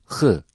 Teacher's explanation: boğazın başlangıcından boğaz biraz biraz açılarak ve hırıldatarak çıkarılır